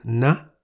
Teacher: ending with a short vowel sound is in the high tone